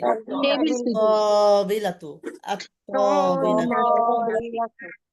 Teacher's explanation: লামের উচ্চারণ হবে না, লামের উচ্চারণ হবে না। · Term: শামসিয়া